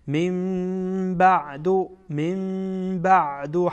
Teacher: اینجا اقلاب میکنین، یعنی نون را به میم تبدیل میکنین